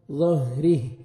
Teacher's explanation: را کے نیچے زیر، را کو باریک پڑھیں گے، ہا ساکن ہو جائے گا جب سٹاپ کریں گے۔